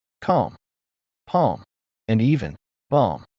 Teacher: This is a pattern. When you have an L followed by M, the L is usually silent.